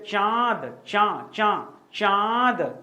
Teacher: नाक से आवाज आएगी दोस्तों, इसीलिए अनुनासिक कहा गया